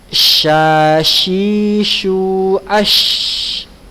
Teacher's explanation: Huruf sya ini tafasyi sifatnya ya, yaitu tersebarnya udara pada seluruh mulut ketika mengucapkan huruf pada makhrajnya